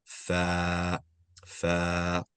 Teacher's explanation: We're extending it 2 times, 2 counts, right? The fatha is 1 count, and now with the alif it becomes 2. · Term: long vowel